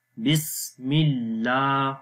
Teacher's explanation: اللہ کے نام سے پہلے زیر آ گئی تو اللہ کا نام باریک پڑھیں گے